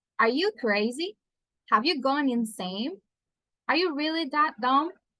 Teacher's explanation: to criticize someone we are going to use our Rising tone · Rising tone to criticize someone.